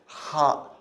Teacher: It's not ha, but it's ha. Ha, you're like clearing your throat. It's from the deep throat, actually.